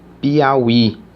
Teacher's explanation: Termina em i. I. E parece que o i é o mais forte.